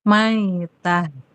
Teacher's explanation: Nah, kalau berhenti, dia taknya berubah jadi ha dan pendek.